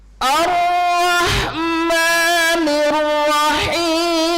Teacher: Lagu keduanya naik datar